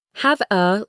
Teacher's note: Have a links to become hava.